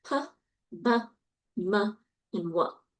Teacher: bilabial sounds are p, b, m, and w